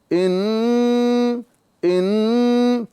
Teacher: یہاں پر آپ دیکھیں گے کہ نون مشدد میں جب ہم گنہ کر رہے تھے تو زبان مخرج میں ٹچ ہو رہی تھی، ان تو نون مشدد کے اندر زبان کا سرا جو ہے یہ تالو میں ٹچ ہو جاتا ہے